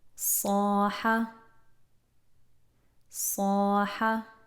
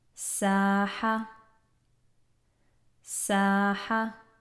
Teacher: All of that heaviness comes from the back of the tongue, lifting the back of the tongue and getting that imprisoned feeling in the mouth. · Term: Saad